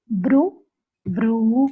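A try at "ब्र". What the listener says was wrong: It is not bru. It is br. no rounding of your lips. It is br, not bru. There is no oof. It is only r sound. It is not bru. It is br.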